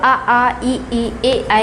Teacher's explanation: जब हम लोग आ ई ए ऐ का उच्चारण करते हैं तो ओठ हमारे जो हैं ये गोलाकार नहीं होते हैं।